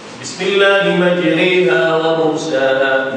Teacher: Majriha imanatul alif ila ya, condong alif kepada ya, bukan condong sampai jadi ya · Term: imalah